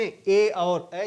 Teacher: कंठ तालव्य में ए और ऐ, जिनका उच्चारण कंठ और तालु दोनों से होता है।